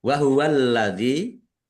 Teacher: Wa huwallazi, alladzi lamnya ada tasdidnya, dibaca double